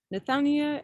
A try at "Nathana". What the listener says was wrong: Yeah, Nathana. Just Nathana. The I is silent.